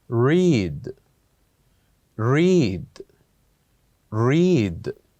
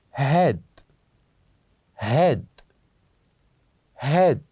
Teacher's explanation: So same letters, but they are pronounced differently, as the first one is longer than the other one.